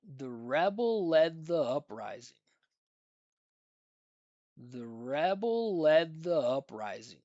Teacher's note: every time I hit one of those stressed syllables, you're going to hear the pitch go up and you're going to hear or you're going to see my mouth create space, but you also hear the space as well.